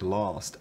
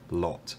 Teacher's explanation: the vowel in words like last actually does sound pretty much indistinguishable from the vowel in words like lot